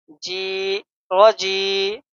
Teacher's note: جی کو ہم ایک الف کے برابر کھینچیں گے کیونکہ یا مدہ ہے